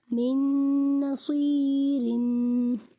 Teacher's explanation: نون ساکن کے بعد نون حروف یرملون میں سے ہے اس لیے یہاں پر غنہ کر کے پڑھیں گے